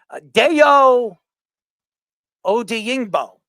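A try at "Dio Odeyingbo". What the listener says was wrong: That is Incorrect. it's not Deo, it's Dio. It is Dio Odangbo. Dio Odangbo.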